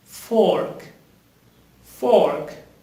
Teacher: you pronounce the r with your throat